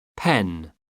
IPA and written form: pɛn (pen)